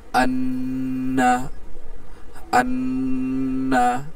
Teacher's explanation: এখানে হরকতের বামে নুন ও মিম যে কোনো একটা হরফে তাজদিদ হইলে গুন্নাহ করে পড়তে হয়। দেখুন, এখানে হরকতের বামে নুন আছে, নুনে তাজদিদ আসছে, সুতরাং এখানে গুন্নাহ করে পড়া ওয়াজিব আছে, অবশ্যই গুন্নাহ করে পড়তে হবে। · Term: ওয়াজিব গুন্নাহ